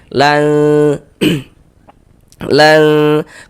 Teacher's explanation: Cara membaca ikhfa hakiki dibaca samar. Jadi bunyi nun sukun itu dibaca samar dengan kita bersiap-siap masuk ke dalam huruf ikhfanya. Jadi jadi dia itu di tengah-tengah antara sifat izhar dan juga sifat idgham kayak gitu.